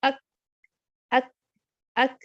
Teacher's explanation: میرا زبان کا پیچھے والا حصہ 50% آف ہارڈ پیلیٹ اور 50% سافٹ پیلیٹ کی طرف ٹچ کر رہا ہے. ٹھیک ہے, تو اس سے کیا ہو رہا ہے, میری آواز بند ہو رہی ہے, سانس بھی بند ہو رہی ہے. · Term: کاف